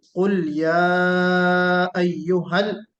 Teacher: और या में मद है, मद मुनफसिल। कुल या अय्युहल, अय्यु में या पर तशदीद है जो बिल्कुल वाज़ेह होना चाहिए। · अय्यु में या पर तशदीद है जो बिल्कुल वाज़ेह होना चाहिए। हा वाज़ेह होना चाहिए।